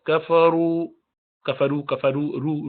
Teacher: والذین کفروا، رو موٹا ہے